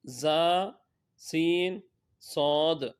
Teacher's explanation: سیٹی کی طرح تیز آواز نکلتی ہے، اس لیے ان حروف کو حروف صفیریہ یعنی سیٹی والے حروف کہتے ہیں۔